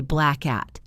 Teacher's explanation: We hold the k sound at the back of our throat for a split second before releasing it into the at. It connects the two words into a single unit.